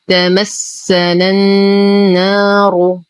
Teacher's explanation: ننتقل من فتحة النون إلى تجديد النون في كلمة النار حرف المد يسقط بسبب التقاء الساكنين، الساكن الأول هو حرف المد والساكن الثاني بداية التشديد في حرف النون. همزة الوصل تسقط في در الكلام، واللام شمسية مدغمة بالنون · همزة الوصل تسقط في در الكلام، واللام شمسية مدغمة بالنون، فنقول تمسنا النار. نشد النون بغنة أكمل ما تكون، نعطي المد الطبيعي بعدها حقه، نفخم الراء إلا أياما معدودة.